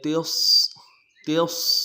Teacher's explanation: تا صاد زیر تس، تس، صاد کو موٹا کرنا ہے